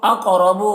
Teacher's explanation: कौफ को पुर पढ़ेंगे, हुरूफ मुस्तालिया में से है और कौफ में कलकला करेंगे। रौ को पुर पढ़ेंगे।